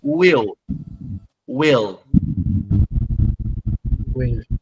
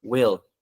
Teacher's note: A língua é no topo do céu da boca. A ponta da língua é no céu da boca. Will. Então eu não falo will you come?